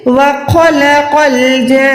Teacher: جا کو 4 سیکنڈ لمبا کرنا ہے, پھر نون کے ساتھ ملا کے گنا کر کے نون کو ملانا ہے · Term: نون شد